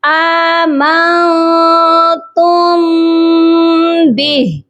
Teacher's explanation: میم ساکن کے بعد جب بھی حروف با آتا ہے تو ہم یہاں پر بھی غنہ کرتے ہیں۔ تو میم پر ہم یہاں غنہ کریں گے، چھپا ہوا غنہ کریں گے۔ · نون ساکن پر ہم اپنی آواز کو ناک میں چھپائیں گے، اور تا میم پیش تم، اس قاعدے کو بھی سمجھ لیجئے کہ میم ساکن کے بعد جب بھی حروف با آتا ہے تو ہم یہاں پر بھی غنہ کرتے ہیں۔